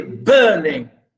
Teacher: we say burning, stress on burn